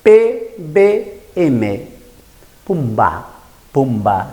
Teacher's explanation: Eso vienen a ser las consonantes bilabiales. Se juntan los dos labios.